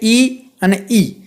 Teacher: ઈ છે તાળવામાંથી બોલાય, કંઠમાંથી નથી બોલાતું કે નથી એમાં હોઠનો ઉપયોગ થતો, એ તાળવામાંથી બોલાય છે. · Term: તાલવ્ય